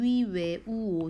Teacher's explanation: 위, 웨, 우, 오 동글동글하게 입술이 말려요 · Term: 원순